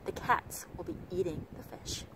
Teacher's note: Và các bạn thấy rằng là độ dài hầu như không hề thay đổi. Người ta vẫn nhấn vào ba cái từ chính, đó là the cats, the eat và the fish.